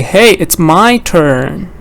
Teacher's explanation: I say it's my turn because I want to emphasize that it's my turn not your turn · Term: emphasizing important words